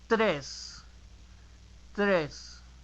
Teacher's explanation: In Spanish, there is no air at the end of the T sound. It's t, not t. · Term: dry T